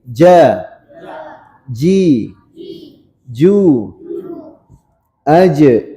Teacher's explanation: kesalahannya ja biasa itu pecah Bunyinya kayak ca gak boleh ca ya. Bukan ca tapi ja.